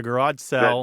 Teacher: There is a vowel merger taking place in this part of the country that you're talking about, where sale, S-A-L-E, and sell, S-E-L-L, sound a lot alike.